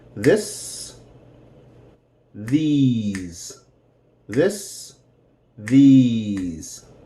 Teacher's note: you need to master that vibration with the Z sound and that short I sound